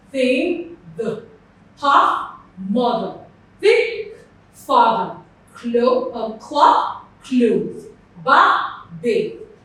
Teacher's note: They are dental sounds because when you are articulating them, you put your tongue in between your teeth. So this sound almost sounds like your letter T, and this almost sounds like the letter D.